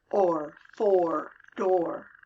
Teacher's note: Starts with the open O in the middle and goes up to the back of your mouth for the R. Or. Pull your tongue up in the back. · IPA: /ͻr/